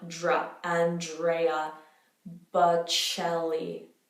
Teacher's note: DR becomes dr, which is kind of like a JR sound.